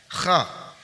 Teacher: sifat al-isti'la, yaitu pangkal lidah terangkat, kemudian baru bunyi keluar setelah itu. Jadi pangkal lidah terangkat dulu, baru huruf dikeluarkan, dibunyikan.